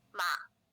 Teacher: Now let's hear it as a partial third tone, which is a low falling tone with a 2-1 contour